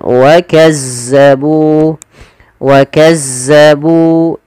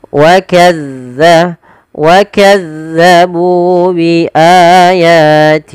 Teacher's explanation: Huruf zal yaitu ujung lidah kita harus kita ujung lidah ujung lidah harus ditempelkan dengan gigi seri atas agar sempurna daripada makhraj huruf zalnya